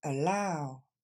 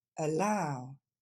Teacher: ce premier a c'est pas un a c'est juste le son e et c'est la deuxième syllabe qui est accentuée